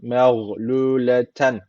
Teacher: burada tenvinden sonra elif gelmiş. O zaman ishar tecviti var. Direkt okuyoruz.